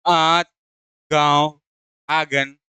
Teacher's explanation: इसमें मुख से अधिक सांस निकलती है और नाक से क्या होता है? कम सांस निकलती है। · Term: अनुनासिक